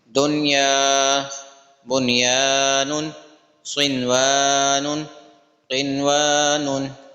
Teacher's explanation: اظہار مطلق ہونے کی وجہ سے اس میں غنہ بھی نہیں ہوگا